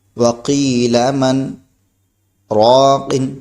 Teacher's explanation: واو زبر و، قاف یا زیر قی وقی، لام زبر لا وقیل، میم نون زبر من وقیل من، را الف زبر را، قاف دو زیر قن راقن، وقیل من راقن. یعنی 2 سیکنڈ تک ہم اپنی آواز کو روکیں گے، پھر اس کے بعد جو ہے آگے اسی سانس سے ہم آگے پڑھیں گے. جیسے کہ ہم پڑھا میں نے وقیل من، آواز رک گئی لیکن سانس ابھی ہے راقن، اسی سانس سے ہم نے راقن کو پڑھ دیا. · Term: سکتہ